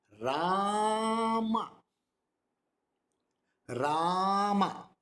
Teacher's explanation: So we emphasize on one and we put a short in the second one. · The Ra, that is not short. It is Ram. Ma is short. Ra is long.